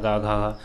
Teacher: वहीं कंठ से का बोला जाता है, खा बोला जाता है, गा, घा।